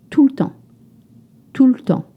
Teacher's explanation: You notice that the E, the E sound is almost dropped to say tout